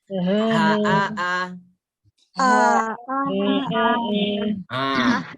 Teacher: Dirasakan A sama H di pangkal tenggorokan.